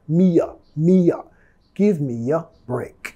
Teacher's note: Vamos a vincular metiendo sonido Y